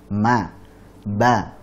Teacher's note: Sedangkan mim dan ba itu memiliki kesamaan, yaitu sama-sama keluar dari asy-syafatain, dua bibir.